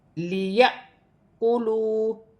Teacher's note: الف پر جزم کی حرکت ہے، لیأکلوا، الف پر جزم کی حرکت ہوگی تو الف کو حمزہ پڑھا جائے گا اور جھٹکے کے ساتھ پڑھا جائے گا